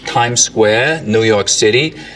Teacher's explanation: in like this kind of New York City accent tongue tip on the teeth